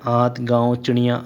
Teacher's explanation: ज़्यादा सांस आपके मुंह से निकलेगी और कम सांसें आपके नाक से निकलेगी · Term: अनुनासिक